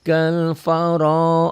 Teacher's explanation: Kal faro, ro-nya mantobi'i, ro-nya juga tebel, tabkhim, karena ro-nya baris di atas